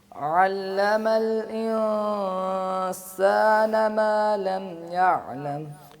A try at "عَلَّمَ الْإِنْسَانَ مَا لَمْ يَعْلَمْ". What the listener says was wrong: انسان کے اخفاء کو مزید باریک کرنے کی ضرورت ہے، پہلے بھی توجہ دلائی تھی، آپ کوشش